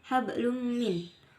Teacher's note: idgham biguna karena terdapat domah tain yang bertemu dengan huruf mim. Cara membacanya yaitu masuk dengan mendengungkan.